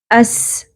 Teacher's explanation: سین ساکن ہے سیٹی کی آواز آنی چاہیے